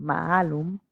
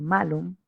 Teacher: Tenemos la A larga, como en maalum, que significa manzano, y la vocal breve de malum, que significa malo.